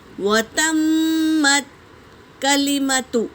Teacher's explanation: میم پر تشدید ہے تو غنہ کریں گے